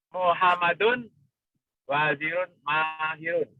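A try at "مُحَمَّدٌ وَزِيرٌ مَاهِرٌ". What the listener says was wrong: Wazirun, coba tidak wajirun. Wazirun mahirun.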